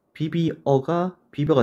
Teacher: 어는 그대로 있기 때문에 단모음 이가 반모음 제이로 바뀌었다는 걸 알 수 있습니다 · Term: 반모음화